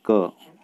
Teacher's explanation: क को बोलेंगे तो इसमें कम हवा मुंह से उच्चारित होती है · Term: अल्प प्राण